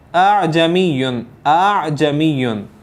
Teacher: تو اسی کو تسہیل کہتے ہیں کہ دوسرے حمزہ کو نرم کر کے خود حمزہ کے الف، خود حمزہ اور الف کے مخرج کے درمیان سے ادا کیا جائے · پہلا والا حمزہ آپ نے بالکل واضح کرنا ہے اور پھر اس کے بعد اعجمیٌ، اعجمیٌ، بالکل باریک سا فرق ہے۔